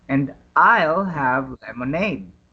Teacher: Notice how stresses I'll and lemonade.